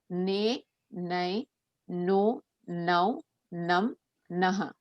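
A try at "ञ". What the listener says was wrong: Here, the sound I hear is ne, nai, no, now, nam, naha. It's not na, nakaram. It is nya. Nya, nya, ni, ni, nyu, nyu, ngir, ngir, ngr, nye, nyai, ngo, ngau, ngam, ngaha. So that nasal sound should come, and you cannot say na or na here. Okay, na has a particular place, and there only it will be used. With that group only it will be used.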